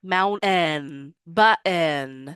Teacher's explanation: Some dialects have glottal stops that they use in place of the T sound.